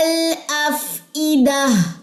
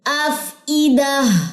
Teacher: افئدہ زیر کو یہاں پہ باریک رکھنا ہے جو حمزہ کی زیر ہے